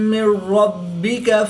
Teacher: 2 زبر کی تنوین کے بعد میم حروف یرملون میں سے ہے تو یہاں پر ادغام مع الغنہ ہوگا یعنی غنہ کر کے پڑھیں گے۔ نون ساکن کے بعد را حروف یرملون میں سے ہے تو یہاں پر ادغام بلا غنہ ہوگا، یہاں پر غنہ نہیں کریں گے بلکہ بغیر غنہ کے ادغام کر کے پڑھیں گے۔ را مشدد پر زبر ہے تو را کو پر پڑھیں گے۔ · با حروف قلقلہ میں سے ہے اور جب حروف قلقلہ مشدد ہوں تو ان میں قلقلہ خوب جماؤ کے ساتھ کریں گے، اس کو قلقلہ کبرا بھی کہتے ہیں۔